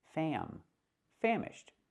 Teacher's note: the word is pronounced famished, using the short ah like ham and ma'am